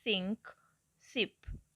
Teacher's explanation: The voiceless alveolar fricative S has a strong hissing sound as the S in English sink, sip.